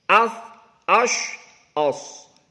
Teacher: Dia punya sifat hamas, punya sifat samar, nafasnya tidak tertahan